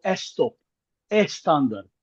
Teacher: In Spanish, it is impossible to to pronounce a word that begins with two consonants. Like uh a Spanish speaker simply cannot pronounce the word stop. They would go estop.